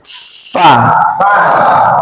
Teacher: bibir bawah bagian dalam. Bertemu ujung gigi atas.